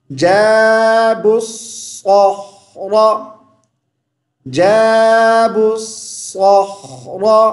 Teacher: را کو موٹی آواز کے ساتھ پڑھیں گے